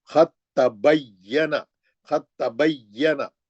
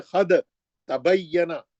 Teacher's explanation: یہ جو ساکن دال ہے یہ گر جائے گا, آپ سیدھا تا میں آ جائیں گے, اور اس کو تجدید سے پڑھیں گے. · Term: ادغام متجانسین